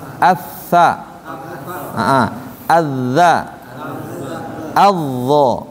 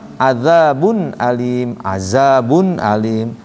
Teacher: Karena dia belum tepat, naro lidahnya itu belum tepat posisinya. Nah, letakkan ujung lidahnya di ujung gigi seri atas